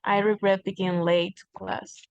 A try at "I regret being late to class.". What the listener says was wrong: Very good. I regret being late to class. Perfect.